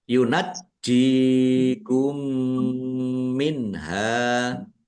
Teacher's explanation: jimnya ada tasdidnya dibaca double, ditekan biar tampak doublenya